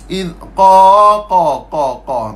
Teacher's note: Huruf qaf dia duduk di kawasan yang awal-awal lidah. Bawah sikit kerengkung.